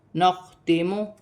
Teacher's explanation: خا حروف حلقی میں سے ہے، حلق سے ادا ہوگا